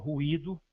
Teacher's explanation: tanto o U como o I são vogais, porque são pronunciadas de maneira forte, clara e distinta, em sílabas separadas, embora se encontrem não estando apoiadas em nenhuma vogal. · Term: hiato